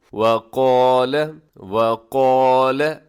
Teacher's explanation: وقال اس میں آپ نے کیا کرنا ہے، قاف موٹا رکھنا ہے اور دوسرے نمبر پر جو لام کے اوپر زبر ہے، زبر زیر پیش والے حرف کو لمبا نہیں کرنا، اسے آپ نے وقال ذرا سا بھی لمبا نہ کیجیے گا ورنہ اس کے معنی تبدیل ہو جاتے ہیں۔